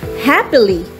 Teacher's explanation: a stressed syllable is followed by two unstressed syllables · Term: dactylic meter